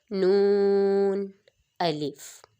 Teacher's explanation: جب ہم اپنے زبان کے کنارے کو اوپر تالو کی جانب لے کر جاتے ہیں تو دانتوں کی جڑ کو لگائیں گے تو پھر یہ ہمارا نون ادا ہوگا، اور اس نون کے اوپر مد بنی ہوتی ہے، مد، اس لیے اس کو با تا کی نسبت تھوڑا سا زیادہ لمبا کریں گے۔